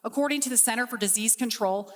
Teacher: The speaker didn't pronounce the T. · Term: silent T